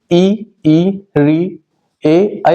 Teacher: इसमें हमारी जीभ का अगला वाला भाग काम करता है, इस पे हमारा जोर पड़ता है। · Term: अग्र स्वर